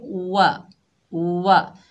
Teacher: वाव के ऊपर ज़बर है, बगैर खींचे पढ़ेंगे। वाव को अदा करते वक्त होंठों को मुकम्मल गोल करेंगे।